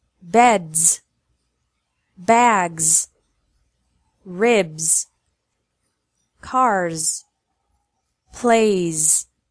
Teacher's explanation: S is pronounced as Z when it follows a voiced sound.